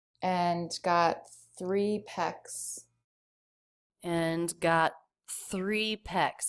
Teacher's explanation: she doesn't release the T she still makes it a stop T